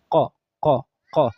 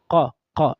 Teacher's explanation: I'm making sure it is coming from that back end of the tongue. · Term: qaf